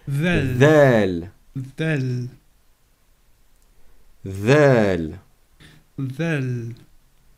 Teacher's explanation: en sortant votre langue, de sorte à ce qu'elle tape les dents du haut